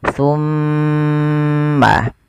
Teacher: Ketika ada mim, mim berharakat tasydid. Cara membacanya ditahan suara mimnya. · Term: bacaan gunnah